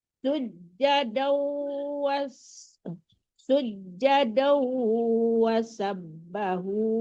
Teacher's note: Sujadau itu ditarik ke hidung ya. Wasabbahu ha kecil.